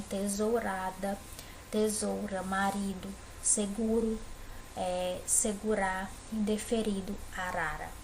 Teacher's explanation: quando o r aparece ele entre vogais ou tem uma vogal antes de uma vogal depois o som sai mais tremidinho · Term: som fraco